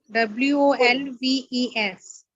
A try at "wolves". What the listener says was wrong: VES, not FS. WOLVES, wolves.